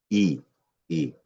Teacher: Esta vocal I, como ven en la imagen, se produce, ¿no?, eh, en la parte anterior de la cavidad vocal y y arriba alta, ¿correcto? I anterior y alta.